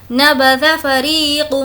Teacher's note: ری کو کھینچ کر پڑھیں گے کیونکہ یا مدہ ہے۔ یا مدہ کا مطلب ہے یا جس پر جزم ہو اور اس سے پہلے زیر ہو تو وہ یا مدہ ہوگا، اس کو ہم کھینچ کر پڑھیں گے۔